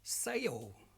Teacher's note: The L sound at the end of the words sounds deeper, longer, and sounds like O.